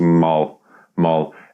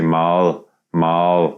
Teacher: just say it like you're used to Mal Mal and now instead of the tongue up for the L in the end you put the tongue down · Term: soft one